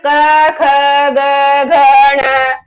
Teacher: क वर्ग का उच्चारण स्थान है कंठ।